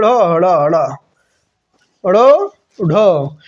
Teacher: ये ढ़ हड़ा हड़ा, ड़ ढ उच्छिप्त बोलता, क्योंकि इसमें जीभ क्या करती है, दंत मूल को छू करके बहुत जल्दी से ऊपर उठती है, इसीलिए इसको उच्छिप्त बोला जाता है।